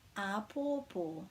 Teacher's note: each syllable is actually stressed the same